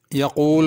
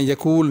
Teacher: یقول کی قاف بڑی ہے، اس کو پر کر کے پڑھنا